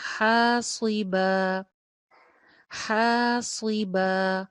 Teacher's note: ہا کے ساتھ الف مدہ اور لاسٹ میں با کے ساتھ بھی الف مدہ، دونوں ایک جتنا لمبا رہیں گے